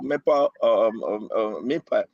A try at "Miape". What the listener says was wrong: Miape. Miape, you see the A? M-E, A.